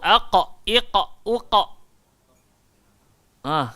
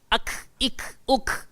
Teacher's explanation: So qaf keluar dekat pangkal lidah. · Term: huruf qaf